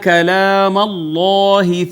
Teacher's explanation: اس میں جلالت کا ماقبل مفتوح ہے، لہٰذا اس کو مفخم پڑھیں گے